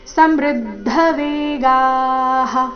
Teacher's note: ದೀರ್ಘ ವಿಷಂತಿ ನಾಶಾಯ ಸಮೃದ್ಧ ವೇಗಾಹ ಸಮೃದ್ಧ ಇಲ್ಲಿ ಸಮೃದ್ಧ ಈ ರೀತಿ ಬೇಡ ಸ ಮೇಲೆ ಆಘಾತ ಬರಕೂಡದು ಮೃ ಮೇಲೆ ಆಘಾತ ಬರಬೇಕು